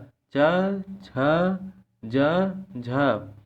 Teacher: तालव्य ध्वनियों का मतलब होता है कि इन व्यंजन के उच्चारण से जीभ तालु में टकराते हैं। तालव्य ध्वनियों का उच्चारण स्थान तालु होता है।